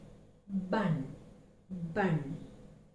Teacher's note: b is uttered with lesser amount of breath force. Since this is a voiced consonant, since it vibrates more as we utter it, as you can see, bun, bun.